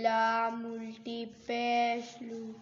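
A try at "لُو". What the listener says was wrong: लंबा करना है ना उल्टी पेश को,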